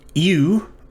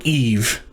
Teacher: this diphthong is pronounced either you, if you pronounce your vavs like a W, or eve, if you pronounce your vavs as a V sound